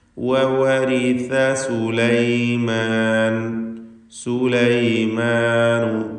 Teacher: സാ നാവിൻ്റെ തലപ്പിൻ്റെ മുകൾ ഭാഗം, പിന്നെ മേലെ മുൻപല്ലിൻ്റെ അറ്റവും, ഇവ രണ്ടും കൂടി ചേരുമ്പോഴാണ് സാഇൻ്റെ ഉച്ചാരണം ഉണ്ടാകുന്നത്.